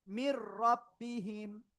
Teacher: গুন্না ছাড়া মিলিয়ে পড়তে হবে।